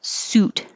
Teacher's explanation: looks like sut but the vowel is ooh as in who not sweet